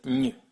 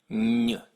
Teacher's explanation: This is an N made with the middle of your tongue touching your hard palate. It's kind of like saying a Y, y, and an N at the exact same time.